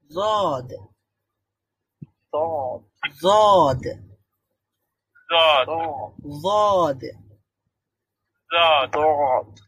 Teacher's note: আমরা যেগুলো দিয়ে চাবাই সেই দাঁতগুলোর উপরের দাঁতগুলোর সাথে যুক্ত হবে জিহ্বার গোড়ার একটা পার্শ্ব উপরের দাঁতের গোড়ার দিকে যুক্ত হবে